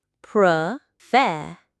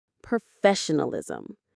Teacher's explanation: The stress is on the second syllable, fe.